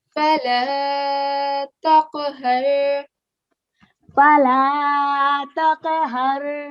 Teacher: we were giving a jerking sound on the qaf